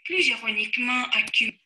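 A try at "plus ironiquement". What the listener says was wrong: Плюзироникмент. Вот это о, второй слог в слове, съехало. Послушайте, увидите это.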